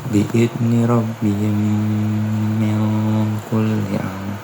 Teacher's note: Yang pertama idgham mimi apabila mim sukun bertemu dengan mim, maka dibaca dengan dengung.